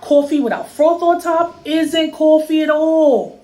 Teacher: One feature common in New York City is what we call a raised vowel in words like thought and cloth.